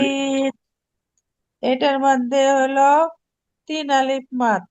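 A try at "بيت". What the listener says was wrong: 4 আলিফ, এটা মোটা চিহ্ন। এই যে একটু লেস থাকে, এই যে একটু লেস লেস এরকম লেস থাকে।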